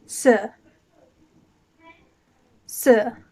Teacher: now the number two is pronounced r like a pirate and it's in fourth tone going down